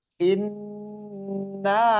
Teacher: Jadi innya itu ditahan dulu, dilamakan, ditahan kurang lebih 2 harokat. Inna, na-nya panjang. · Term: Gunnah musyaddadah